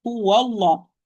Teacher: the lam here of the word Allah, the Almighty, is going to be heavy because it's preceded by fatha.